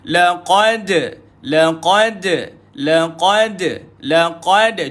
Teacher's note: jumpa dengan Dal berlaku bacaan Qalqalah · Q naik lidah jangan keluar air jangan keluar angin